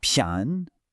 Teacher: It combines a rising second tone on 偏 with a neutral tone on yi. · First, you have to ensure that the pian has a full, clear rise. It should sound like you're asking a question.